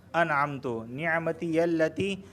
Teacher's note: یہاں پہ مد منفصل واقع ہو رہا ہے کیونکہ لتی کے آخر میں یا مدہ اور انعمتو کے شروع میں حمزہ واقع ہو رہا ہے، تو اسے 2 الف کے برابر بھی کھینچ کے پڑھا جا سکتا ہے اور 3 سے 4 الف کے برابر بھی کھینچ کے پڑھا جا سکتا ہے۔